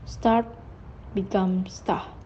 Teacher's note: perf deletion of middle and final r